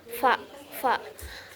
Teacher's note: huruf fa ini keluar dari bibir, di antara bibir dan gigi. Cara keluarnya itu secara ihtikaki atau adanya gesekan. Kemudian posisi pita suaranya itu mahmus atau tidak bersuara.